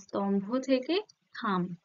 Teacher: যে অল্পপ্রাণ ধ্বনি থাকবে সেটা মহাপ্রাণ ধ্বনির প্রভাবে সেটাও মহাপ্রাণ ধ্বনি হয়ে যাবে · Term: মহাপ্রাণী ভবন